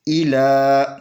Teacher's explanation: فتو بو، اگر یہ الف نہیں پڑھی جائے گی، الف زیر ای، لام کھڑی زبر لا، اس لام کو 2 حرکت کے برابر کھینچ کر پڑھیں گے